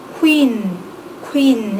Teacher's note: 바람을 더 많이 내는 키읔이라고 볼 수가 있겠고